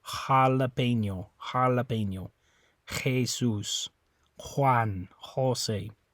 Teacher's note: It's a little more guttural than it is in English. It comes from your throat a little more. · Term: H sound